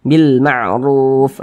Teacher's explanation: tanda baca domah ini huruf ro nih ada tanda baca domah dibaca tebal dibaca tafkhim sehingga pangkal lisan kita itu naik terangkat ke atas ketika Kita mengucapkannya Bil mar'ruf ditebalkan huruf rnya kemudian Ruf dibaca panjang ini namanya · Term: Mad Arid sukun